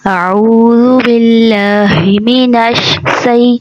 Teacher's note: جب اس کی تلاوت کری جاتی ہے تعوذ کی تو جلدی میں کبھی منہ سے شین کی جگہ سین کی ادائیگی ہو جاتی ہے